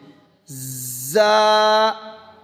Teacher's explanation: زا ڈھیلا نہیں پڑھنا بلکہ سیٹی جیسے یہ سیٹی ہے، زا۔ اس کے بعد ہے یہ دیکھیں سیٹی نکل رہی ہے، سین، اس طرح سین۔